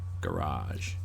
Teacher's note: Americans do what Southerners in England do with the word bath. Bath. Garage. They extend the A. Garage. It's a mouthful, though, the way they say it, isn't it?